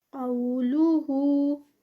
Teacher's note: قاف heavy, واو lean, 2 counts.